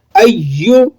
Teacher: یا کو آپ مضبوطی سے ادا کریں گے کیونکہ یا کے اوپر تشدید لگی ہوئی ہے، سختی کے ساتھ پڑھا جائے گا۔